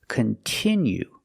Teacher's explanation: we have to use the short sound e like this is we have the letter i which makes the sound e and it's a stressed syllable